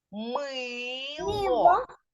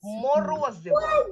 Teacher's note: мило ми ми чуємо що це слово звучить І вимовляється твердо на початку слова стоїть твердий приголосний звук м